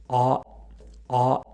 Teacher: Thus, A is a low back vowel. It's also considered to be an open vowel, as our jaw is in a relatively open position when we say it. · On the other hand, at the bottom right corner of the chart, we have the vowel A. When saying A, the highest point of the tongue has a low back position. Thus, A is a low back vowel.